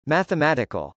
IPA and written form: mˌæθəmˈætɪkəl (mathematical)